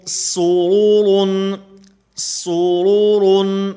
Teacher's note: را کے اوپر کیونکہ پیش ہے، اور آگے بھی را کے اوپر دو پیش جو ہے وہ تنوین ہے، دو پیش والی، تو اس لیے ان دو را جو ہیں ان کو پر پڑھا جاتا ہے